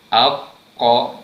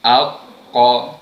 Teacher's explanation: Untuk menyebut huruf qaf, pangkal lidah kita tadi naikkan ke langit lembut belah atas.